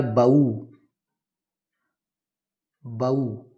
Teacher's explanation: एक तीसरा उदाहरण लिखेंगे, बहु। बहु के हा का लोप करेंगे तो शब्द बनेगा बऊ